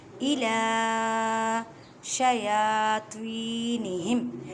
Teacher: إِلَى شَيَاطِینِہِم اب دیکھیں توی یا ساکن سے پہلے زیر ہے، یا مدہ کا قاعدہ کریں، توا کو ادا کرتے وقت خیال رکھیں کہ تا کی آواز نہ آئے کیونکہ یہ حروف مستعلیہ یعنی موٹے حروف میں سے ہے